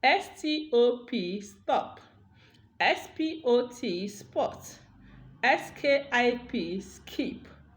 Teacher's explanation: t, p, and k become unaspirated because they are coming after s · the voiceless stops are unaspirated after s. You see, after s, letter S sounds, so that means when there is S followed by the voiceless stop, that voiceless stop becomes unaspirated. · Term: unaspiration rule